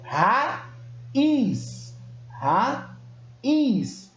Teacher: Mas quando eu faço a separação desta sílaba, quando eu faço a separação silábica da palavra, essa junção aí, elas se separam, elas não ficam na mesma sílaba, significando que cada uma delas tem força. Então eu pronuncio tanto o A quanto o I na mesma intensidade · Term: hiato